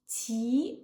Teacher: Ti, rising tone, second tone. Ling, rising tone, second tone.